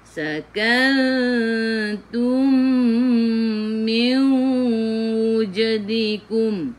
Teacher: Idgham mislain. Masuk ke dalam mim yang kedua dan dengung.